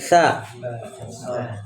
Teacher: t itu keluar dari ujung lidah menempel pada ujung gigi seri